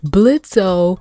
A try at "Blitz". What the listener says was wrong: the O is silent, asshole!